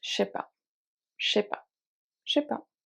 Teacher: je often becomes sh when speaking, not texting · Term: the sh sound